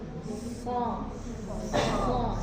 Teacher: kalau sod itu keluar melalui celah ya, posisi lidahnya di belakang gigi seri bawah, sod ya. Kemudian ada suara yang keluar dari celah gigi di atas dan bawah, so.